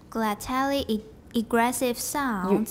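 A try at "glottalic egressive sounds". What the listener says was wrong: You have to watch the k.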